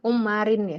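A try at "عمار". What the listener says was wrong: Ammarin, bukan ummarin. Enggak ada ummarin, enggak ada.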